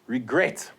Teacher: the stress, the accent, is on the final syllable. So there you have to double the T.